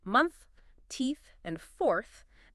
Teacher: Your tongue tip must be gently out, visible between your top and bottom teeth, with a steady stream of air flowing over it. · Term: TH sound